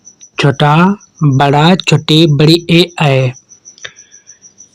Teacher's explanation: वे स्वर जिनके उच्चारण करते समय ओष्ठ का आकार गोल न होकर ऊपर नीचे फैल जाता है कहलाते हैं आवृतमुखी या आवृत्ताकार स्वर।